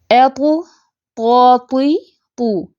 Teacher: त की आवाज बुलंद है मोटी बहुत भरी हुई सख्त होती है